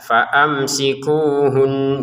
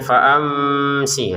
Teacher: mim sukun bertemu sin kita baca dengan jelas